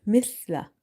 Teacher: Tip of your tongue is touching with the inner edges of your top two front teeth. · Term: tha